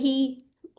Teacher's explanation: अक्साउल हलक से अदा हो रहा है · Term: 1 काउंट